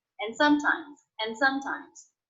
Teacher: I definitely dropped the D in that word